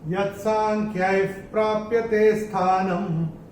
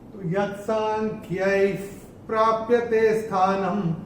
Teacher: तो ये जो मैंने विसर्ग को प्रोनाउंस कैसे किया था, आधा फ, क्योंकि विसर्ग के बाद अगर प या फ आता है तो विसर्ग का उच्चारण होगा फ। जैसे फूंक मारते वैसा, जैसे प या फ अगर आता है तो उसका उच्चारण होता है फ।